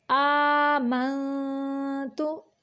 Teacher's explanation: نون پہ اخفا ہو رہا ہے، تو ہم اس کی آواز کو چھپا کر ناک سے نکالیں گے۔ منتو، پیش کی ادائیگی کے وقت ہونٹوں کو تھوڑا سا گول کریں گے۔